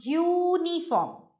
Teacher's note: the sound of U in uniform is a consonant sound like that of Y. The word uniform is pronounced uniform.